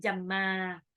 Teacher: Ma di belakang mad iwad bukan jamman tapi jamma.